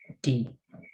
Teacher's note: O una D, nosotros cuando decimos D, ponemos la lengua pues en los dientes, D, en la parte posterior de los dientes superiores, entonces D. Pero para este D en inglés tenemos que ponerlo un poco más atrás de los dientes, tocando ya el paladar que está próximo a los dientes